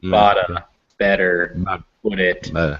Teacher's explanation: it's across two words in this uh poem it's kind of that t is going to become that uh that d sound